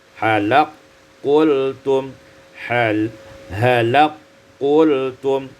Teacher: Pada ayat yang ke-34 halaka qultum idghamul kaf fi qaf, diidghamkan kaf ada qaf menjadi halaq